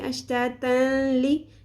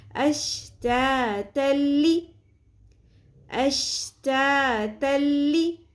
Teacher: جب بھی تنوین یا نون ساکن کے بعد حرف لام یا را یا ارملون میں سے لام یا را آ جائے تو ادغام بغیر غنہ کرتے ہیں، یعنی کہ دو زبر تنوین کو لام کے ساتھ مکمل طور پہ ہم ملا دیں گے، مدغم کر دیں گے اور غنہ نہیں ہوگا، یعنی اس میں جو تنوین کی نون ساکن کی ساؤنڈ ہے وہ نہیں آئے گی. · تن تا دو زبر تن یہ جو نون کی ساؤنڈ ہے یہ نہیں آئے گی، تا زبر لام بن جائے گا تل، بالکل بیچ میں سے ساؤنڈ وہ ختم ہو جائے گی. اشتاتن نہیں پڑھنا، کچھ لوگ اس طرح سے پڑھتے ہیں اشتاتن لی، ایسے نہیں پڑھنا، اشتاتلی اشتاتلی.